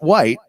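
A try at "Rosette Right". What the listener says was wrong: it's right. There's an R in there.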